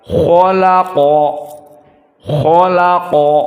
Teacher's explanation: maka kha hanya sekedar fathah dan qa hanya sekedar fathah, maka keduanya fi darajah ats-tsaniyah dari at-tafkhim. Maka kita baca khalaqa, khalaqa, harus tafkhim.